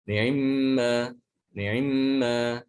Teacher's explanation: itu dibaca dengan cepat ya, kurang dari satu harokat. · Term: ikhtilas kasratul ain